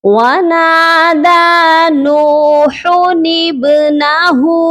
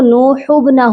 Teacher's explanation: یہاں پر ہم نے اس چھوٹے سے نون کو لازمی پڑھنا ہے، اس نون کا نام ہے نون قطنی۔